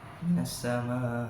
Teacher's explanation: Mat wajib muttasil yakni mat tobi'i yang bertemu dengan hamzah dalam satu kalimat. Dibaca panjang tanpa adanya dengung dan dibaca jelas dengan panjang kira-kira 2,5 alif.